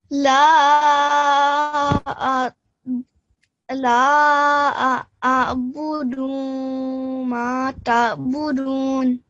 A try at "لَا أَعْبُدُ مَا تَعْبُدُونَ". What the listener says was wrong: And we don't prolong this for 2 seconds. It's just 1 second. لا أعبد. لا أعبد ما تعبدون.